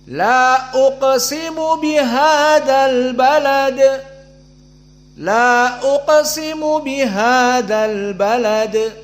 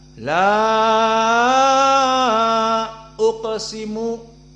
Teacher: Maka di qasr di sini 2 harokat saja, tidak bisa panjang.